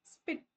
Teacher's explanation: जब आप स्पिट बोलोगे तो आपने स बोलते टाइम हवा अंदर ले ली तो वो अब आपको ऐसा लगेगा कि कोई हवा बाहर नहीं निकली। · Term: अनएकिरेटेड साउंड